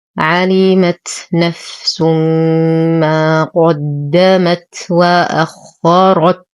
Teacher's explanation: قدمت، نفخم القاف نشد الدال ونهمس التاء. وأخرت، نفخم الخاء والراء ونقف على التاء بالهمس